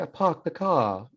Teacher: en ciertas versiones del inglés británico no dicen la R